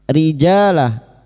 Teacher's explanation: huruf jim yang berharakat fathah fathah diikuti alif dua harakat kita panjangkan mad thabi'i